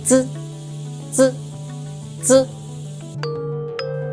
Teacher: To produce the sound, place your tongue against your upper teeth and release air with a slight vibration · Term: the sound z